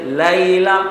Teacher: لیلا سب لام کو باریک پڑیں گے